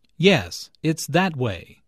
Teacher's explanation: Notice the stress on that. The speaker is pointing in a certain direction and wants to emphasize that direction.